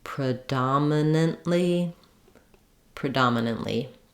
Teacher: just try to keep the relative Rhythm the same so that you're stretching on the second syllable and going more quickly on the other syllables